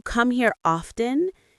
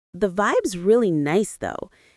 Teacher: His voice rises at the end because it's a question. But when he says, the vibe's really nice though, his tone falls. That's how native speakers naturally end statements. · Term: intonation